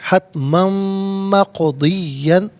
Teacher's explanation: इसे मीम के साथ मिलाकर मीम की आवाज़ को गुन्ने के साथ अदा किया जाएगा